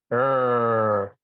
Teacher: So that rrr is a rishi sound, Ritu, Rigveda, and the ra sound pronounced as a vowel